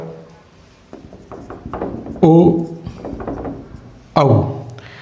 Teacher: ओ औ हे कुठले ते, तर ओ औ मध्ये काय होईल तुमचं ओ औ. तर ओ मध्ये ओठ आणि काय येणार आहे कंठ, म्हणजे त्याला म्हणतो कंठ प्लस उष्ट, कंठ प्लस ओष्ट, कंठोष्ट कंठोष्ट.